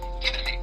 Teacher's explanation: The only big change comes from the T's being pronounced as D's, and this happens because the T's fall between two vowel sounds.